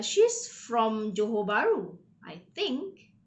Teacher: So you actually raise your tone so that, okay, the listener would know that you are not sure, okay? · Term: rising intonation